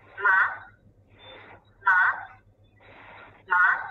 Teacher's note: Then let's put the third tone, a falling rising tone on it. Then it will be read ma, ma, ma, which might mean a horse in Chinese.